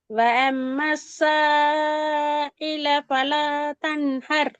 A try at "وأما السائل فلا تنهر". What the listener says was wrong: அந்த அயில தொண்டைக்குள்ளே இருந்து வருது. எங்க இருந்து வரணும் இது இந்த உச்சரிப்பு? வாயில முன்ப நீங்க உச்சரிக்க தொண்டையில உள்ளுக்கு இருந்து நீங்க தான் உச்சரிக்கிறீங்களா? இந்த இடத்துல இருந்து இந்த இந்த எழுத்த உச்சரிக்கணும்.